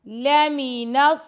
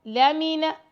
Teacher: لام اور میم کو لمبا نہیں کرنا